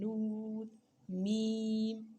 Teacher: निकलने की आवाज़, निकलने की जगह जो आवाज़ जो होती है वो किसी एक जगह पर अंदर मुंह के ठहरी हुई नहीं है, नाक की तरफ से आते हैं। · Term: गुन्ना